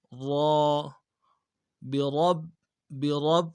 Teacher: با کے بعد جو را ہے اس کو موٹا پڑھنا ہے، موٹا نہیں پڑھا جا رہا ہوتا، را کو موٹا پڑھنا ہے، را، برب، برب، اور را با کے اوپر جو ہے تشدید ہے، تشدید کے اوپر زور دینا ہے، برب۔